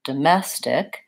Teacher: we have second syllable stress here domestic so the mess is longer it's the same as the